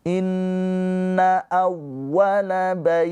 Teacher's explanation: Bait dibaca panjang, boleh 2, boleh 4, boleh 6 harokat. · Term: madlin